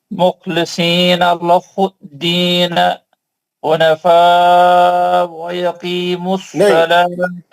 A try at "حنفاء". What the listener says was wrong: حنفاء ویقیموا الصلاۃ. حمزہ کا زبر نہیں پڑھیں گے آپ.